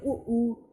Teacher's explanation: जब हम ओंठों की बात करें, आप बोलते हैं ऊ, जब आप बोलते हैं ऊ, तो आपके जो ओंठ है ना वो आगे से गोल मटोल हो जाते हैं। तो इसका मतलब है कि जो ऊ है ये ओष्ठ स्वर है, ओंठों के माध्यम से बोले जाने वाले स्वर है।